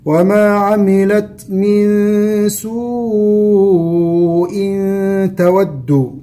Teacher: سوء وعلامة مد بعدها همزة تمد بمقدار أربع حركات